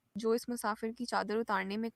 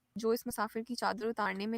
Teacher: the utarne and musafir are great examples of falling into the accented syllable and then rising afterwards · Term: pitch accent